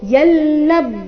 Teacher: ಅನುಸ್ವಾರದ ಉಚ್ಚಾರಣೆ ನಾಸಿಕ ಲ ರೀತಿ ಶಬ್ದ ಮುಂದೆ ಇದೆ ಲಬ್ ಲ ನಂತರ ಬ ಧ ಮತ್ತೆ ವ ಸೇರಿ ಸಂಯುಕ್ತಾಕ್ಷರ